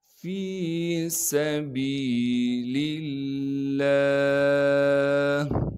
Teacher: لفظ اللہ کے لام سے پہلے زیر ہونے کی وجہ سے لفظ اللہ کے لام کو باریک کر کے پڑھیں گے۔